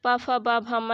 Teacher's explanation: उ प फ ब भ म ये आपका ओष्ठ से बोला जाता है